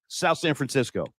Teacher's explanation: don't say South San Francisco it's one word and don't pronounce a th